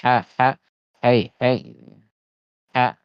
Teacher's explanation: ha itu yang memang harus seperti berbisik